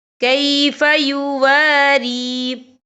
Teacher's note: یا ساکن ہے، یا ساکن سے پہلے زیر ہے، تو ہم یہاں 2 یا 3 حرکت کے برابر کھینچ کے پڑھیں گے۔ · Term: یا مدہ